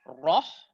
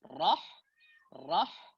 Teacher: Itu kan ro tebal. Ha adalah huruf yang tipis. Ha terbuka, ro tebal.